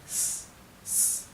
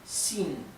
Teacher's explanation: Me faltaba explicarles cómo se pronuncia la X en el pinyin. La X se pronuncia como una SH inglesa, así, shh, pero un poco más tendiendo a una S. Y en algunas partes de China directamente lo pronuncian como una S más suave, s, s, ¿sí?